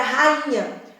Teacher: O NH vai fazer essa nasalização. E aí o som passa a ser de in e não i.